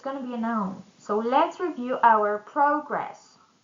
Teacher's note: if we stress the first syllable in the word progress, it's going to be a noun